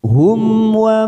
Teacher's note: ada mim sukun bertemu wau namanya Idhar Syafawi kita baca jelas tanpa mendengung